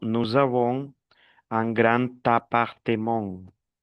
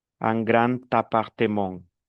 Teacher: Quand un mot finit par D et l'autre commence par voyelle, le D se prononce comme un T.